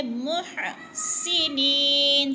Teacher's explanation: ہاں باریک ہے، حلق سے یعنی گلے سے نکالیں گے